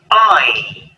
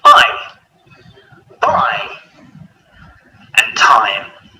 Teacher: our mouths start wide open and closes as we say the sound